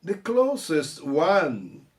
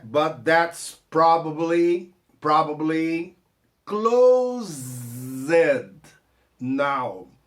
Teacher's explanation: o closest, é o próximo, a pronúncia do S é S cedilha, é SS, né? A pronúncia do closed é Z, porque é verbo fechar, né?